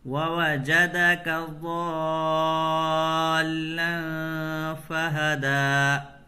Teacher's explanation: یہاں پر غنہ ہوگا، تنوین کے بعد حروف اخفا میں سے فا ہے، تو یہاں نون کی آواز کو ناک میں چھپا کر کے پڑھیں گے۔